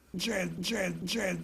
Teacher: It's typical of Louisiana speech to smooth the vowel in the face lexical set · So by smoothing, I mean that rather than pronouncing it as a diphthong, a, that goes from one vowel quality to another, a, he says one vowel quality throughout